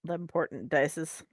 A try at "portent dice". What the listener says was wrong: Yeah, I know what you're saying, but it sounds like you're just saying important in a lazy way.